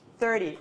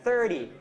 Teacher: The T numbers, 30 and 70, are always stressed on the first syllable.